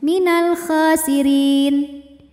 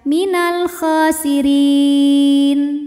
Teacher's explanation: Jadi ketika berhenti, ra-nya boleh kita pilih panjangnya, boleh 2 atau 4 atau 6 harokat, tapi dengan catatan harus konsisten atau harus sama dalam 1 kali bacaan. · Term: mad arid li sukun